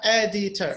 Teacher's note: there's one middle d sir yes editor it's 3 3 syllables so we have editor and the first one is stressed